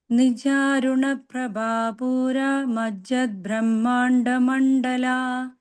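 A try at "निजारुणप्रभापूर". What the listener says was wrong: Prabha, that bha should be Mahaprana, right? This bha is Mahaprana, everything else is the soft sounds only.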